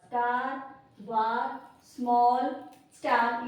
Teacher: जब हम इन वर्ड्स को प्रोनाउंस कर रहे हैं तो आ, जो हिंदी में आ होता है आ, उसकी साउंड ये प्रोड्यूस करता है लेटर ए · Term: आ की आवाज